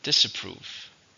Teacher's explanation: 3 syllables, stresses on the last one.